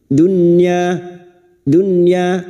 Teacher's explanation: Idhar wajib dibaca jelas tanpa mendengung